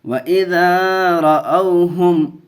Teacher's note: ہا میم پیش ہم، و اذا رأوہم، میم کو ظاہر کر کے پڑھیں گے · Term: اظہار شفوی